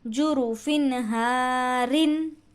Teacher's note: یہاں بھی تنوین کے بعد حروف حلقی میں سے ہا ہے، یہ ہا جو ہے حروف حلقی میں سے ہے، تو تنوین کے بعد تنوین ہے فا پر، تنوین کے بعد حروف حلقی میں سے ہا ہے، اسی لیے ہم یہاں پر تنوین کی آواز کو ظاہر کر کے بغیر غننے کے پڑھ رہے ہیں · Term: اظہار